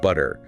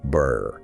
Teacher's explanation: >> Well, a glottle stop is a physical action where you replace the two sound in the middle or end of a word with a brief sharp closure of your vocal cords. >> So instead of a clean sharp forward in the mouth butter, you get burr. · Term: dropped T